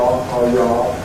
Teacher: the R sound, ra, as being a post-alveolar sound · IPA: ɹ